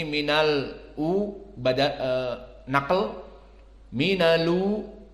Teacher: dan u-nya juga 6 harokat dikarenakan mad badal yang dipilih oleh Wars 6